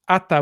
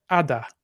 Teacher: it's easier sometimes to just carry the voicing along so instead of ATA we have Ada